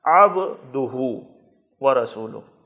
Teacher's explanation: عبدہ الف اور حمزے کی طرح نہیں پڑھنا، عین پر زور لگانا ہے